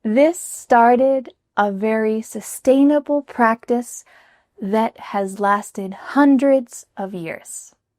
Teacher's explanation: She also emphasizes the word hundreds